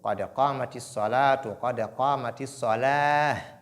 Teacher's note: on doit s'arrêter sur ha et non sur ta. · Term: ta marbouta